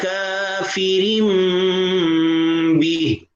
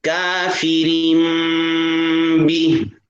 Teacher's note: را کے بعد چھوٹا سا میم ہے، را کو اس کے ساتھ ملا دیں گے